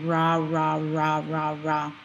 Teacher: notice your tongue kind of just is hanging out it doesn't touch any part of your mouth really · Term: english r